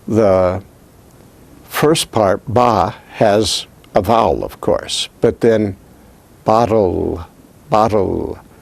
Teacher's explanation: The L there actually is what we call a syllabic L. It takes all the emphasis of the syllable as if it were a vowel.